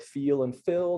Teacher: you get words like feel and fill that are often pronounced close to each other, if not the same